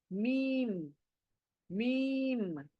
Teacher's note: आपके होंठ दोनों मिल जाएंगे, बंद हो जाएंगे।